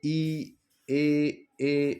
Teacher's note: जिन स्वर के उच्चारण में जिह्वा का अग्रभाग है ना, अग्रभाग का यूज होता है, या अग्रभाग ऊपर की तालू की ओर कुछ ऊंचा उठता है परंतु तालू को स्पर्श नहीं करता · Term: अग्रस्वर